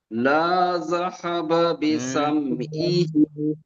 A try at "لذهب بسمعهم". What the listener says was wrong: লাটানো হয়ে গিয়েছে, লামের উপরে হারাকাত আছে দেখেন। লাযাহাবা বিসামইহিম, দেখেন লাম জাবার লা, জাল জাবার জা, লাজা, বা জাবার বা, লাজাবা, সরি, লাজাহা, লাজাহাবা। লাযাহাবা বিসামইহিম।